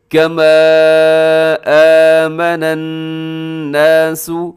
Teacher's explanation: وَإِذَا قِيلَ لَهُمْ آمِنُوا، آگے كَمَا آمَنَ النَّاسُ، کما کے اوپر مد ہے، حروف مدہ ہے، اور آگے حمزہ ہے، یہاں مد منفصل ہے، اسے آپ نے 3 سے 4 سیکنڈ تک لمبا کرنا ہوتا ہے